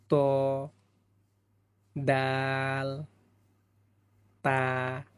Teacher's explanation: জিহ্বার আগা সামনের উপরের দুই দাঁতের গোড়ার সঙ্গে লাগাইয়া 3টি হরফ উচ্চারিত হয়